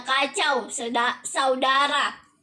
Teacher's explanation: Difton naik menutup mundur au, misalnya kacau, saudara.